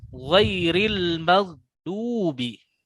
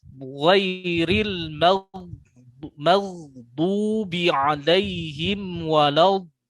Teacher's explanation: Kalau dal istifal, sedangkan yang diinginkan oleh dod adalah isti'la, naikkan pangkal lidahnya, tahan di atas.